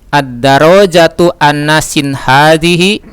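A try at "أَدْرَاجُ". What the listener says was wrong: Jangan disambung dengan ad. A, dia terpisah. A. A itu dia. Ra-nya ditasdid. Ad-darajatu.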